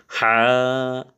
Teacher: নাই কোন গলার মধ্যে দাবায়ে পড়তে হয় না কিন্তু এইটার মধ্যে আমাদেরকে গলার হলকের মধ্যে ওখান থেকে চাপাইয়া পড়তে হবে